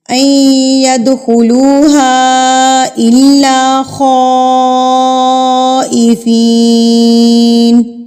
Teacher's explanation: یہ مد متصل ہے، بڑی مد ہے، جس کو ہم نے 4 حرکات کے برابر کھینچنا ہے